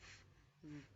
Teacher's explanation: Bilabials, they are produced when the lip comes together, like b, yes, and Then labiodentals, they are produced when the lower lip and the upper teeth come together